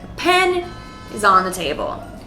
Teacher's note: Table is also an important word, so it's stressed.